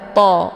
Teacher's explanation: To-nya dibunyikan secara tebal. To. Jadi ujung lidahnya menempel di gusi